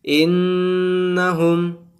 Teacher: نون کے اوپر تشدید آیا ہے، اس وجہ سے یہاں پر گنہ کریں گے